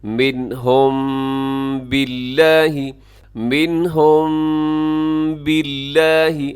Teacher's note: ایسے میم پر تھوڑا سا آپ آواز کو ناک میں لے جائیں گے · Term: اخفاء شفوی